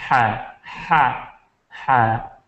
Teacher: جبکہ ہا، ہا یہ اس سے تھوڑا سا نیچے، تو یہ وسط حلق ہے، ادنائے حلق منہ کی طرف ہے، وسط حلق تھوڑا سا نیچے ہے، وہاں سے ہا نکلتے ہیں